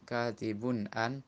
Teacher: Dan sebelumnya tanwin bertemu dengan hamzah katibun an, idhar halki, dibaca jelas bunyi tanwinnya.